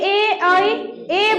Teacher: ए बोलते हैं तो कंठ से आवाज आ रही है, मेरा जीभ टच हो रहा है तालु में, यानी निचले दांत का जो निचला हिस्सा है वहां पे उस चमड़े में जो है ए ऐ कंठ से भी आवाज आ रही है, और दांत मेरा जीभ टच हो रहा है आपको तालु में, यानी कंठ तालव्य। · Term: कंठ तालव्य वर्ण